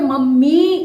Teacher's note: ई की मात्रा लग रही है लंबी आवाज आ रही है देर तक हम रुक रहे हैं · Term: बड़ी ई की मात्रा